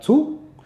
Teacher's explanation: La lettre T est une lettre qui s'apparente aussi au thé, le T comme en français. Sauf qu'on lui mettra un tout petit souffle naturel en plus